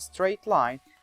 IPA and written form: streɪt laɪn (straight line)